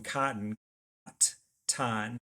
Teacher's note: the t sound is not in the word cotton. The d sound is in the word cotton.